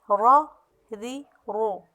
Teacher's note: لا لی لو، نا نی نو، را ری رو۔ یہاں دیکھیں میں نے را کو موٹا پڑھا ہے، را کو زبر والے کو زیر والے کو میں نے باریک پڑھا ہے، اور پھر پیش والے کو موٹا پڑھا ہے ، کیونکہ را موٹے حروف میں